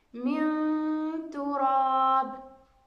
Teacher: إذن مع حرف مستفيل، من تراب، من، إذن نون ساكنة بعدها حرف التاء، وحرف التاء من حروف الإخفاء وهو حرف مستفيل. إذن الغنة أيضا ستكون مستفيلة تبعا لحرف التاء المستفيل.